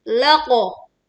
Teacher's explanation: Khof juga tebal dan ini adalah bunyi qalqalah pantul dengan suara yang terdengar jelas.